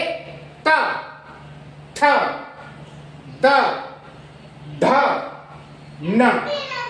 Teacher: दंत है। जो हमारी जीभ की नोक है वो दांत के पास स्पर्श करेगी तो दंत कहलाते हैं।